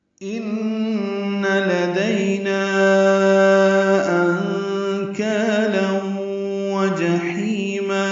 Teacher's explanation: ان میں نون مشدد پہ غنہ ہے، لدینا دئی علیل ہے، اور نا الف مدہ کے بعد حمزہ آنے کی وجہ سے مد منفصل ہے، 4 حرکات لمبا کریں گے